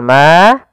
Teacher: Kemudian pada lafal ma ada mad tabi'i. Ada mad tabi'i, yaitu fathah bertemu dengan alif, panjangnya 2 harokat.